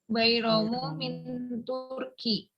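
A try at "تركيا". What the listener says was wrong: Turkiya. Ada alifnya. Dia dibaca fathah. Min Turkiya.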